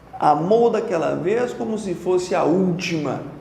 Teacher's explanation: todos os versos terminam em proparoxítonas